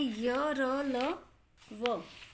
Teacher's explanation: इनका उच्चारण जीवा, तालु, दांत और होंठों के स्पर्श से होता है, परंतु ये स्पर्श पूरा नहीं होता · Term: अंतस्थ व्यंजन